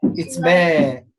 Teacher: So alif mad is light now because it preceded by light letter.